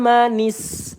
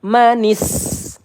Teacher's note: nis sin sukun kita alirkan suara kita ya